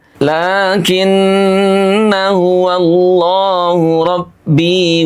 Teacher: ketika kita baca wasal maka kita akan menghilangkan huruf alifnya atau huruf yang bertanda bulat lonjong dianggap tidak ada.